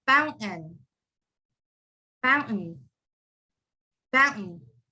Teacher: that t-a-i-n it's just like completely gone and it's replaced with an n